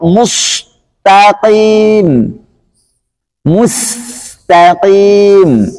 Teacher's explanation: Harus jelas. Karena sin sifatnya istifal, bukan istilah. Jangan sampai dibaca mirip huruf shad.